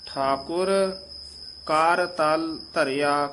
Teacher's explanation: ਇਹ ਕਰ ਤਲ ਇਕੱਠਾ ਨਹੀਂ ਬੋਲ ਜਾਣਾ